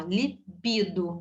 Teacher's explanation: libido, a sílaba tônica no bi, então lípido está errado, ok?